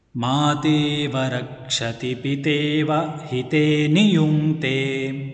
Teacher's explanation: ಮಾ ದೀರ್ಘಃ ತೇ ಇತಿ ದೀರ್ಘಃ ಅಸ್ತಿ. ಗುರುಃ ವ ಹ್ರಸ್ವಃ ಅತಃ ಲಘುಃ.